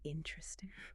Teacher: They're dropping a weak vowel in an unstressed syllable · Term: elision